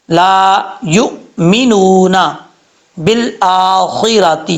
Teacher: حمزہ کے اوپر کھڑا زبر ہے، ایک الف کی مقدار لمبا کریں گے